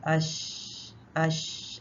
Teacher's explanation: बारीक हर्फ है इसमें से कोई भी हर्फ मोटा नहीं है शीन में आवाज भी जारी रहती है और सांस भी चलता रहता है · ٹھیک ہے، اور یہ بھی باریک حرف ہے، یہ تینوں ہی باریک حرف ہیں، اس میں سے کوئی بھی حرف موٹا نہیں ہے. شین میں آواز بھی جاری رہتی ہے اور سانس بھی چلتا رہتا ہے.